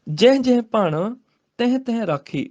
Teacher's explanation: ਜਹ ਤੇ ਤਹਿ ਨੂੰ ਨਾਸਕੀ ਉਚਾਰਨ ਦੇਣਾ ਹੈਗਾ